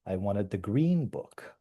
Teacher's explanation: I've emphasized a word here, in this case, green. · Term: focus